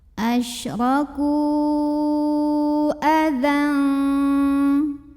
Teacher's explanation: Sedangkan hamzahnya yang a terdapat pada kata adza. Maka kafnya kita panjangkan, boleh 4 boleh 5 harokat. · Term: mad jaiz munfasil